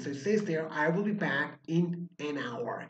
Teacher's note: It's not a sound of H. H is there in the spelling, but the sound of H is silent.